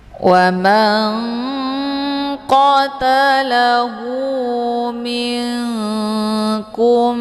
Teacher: Karena antara makharijul huruf nun dengan huruf qof posisinya saling berjauhan. Nun posisinya di ujung lidah. Sementara qof posisinya di pangkal lidah. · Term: igfa ab'ad